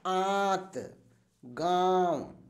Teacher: गांव गांव हम बोल रहे हैं तो क्या हो रहा है मुख से हमारे हवा ज्यादा निकल रही है और जबकि नाक से कम निकल रही है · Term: अनुनासिक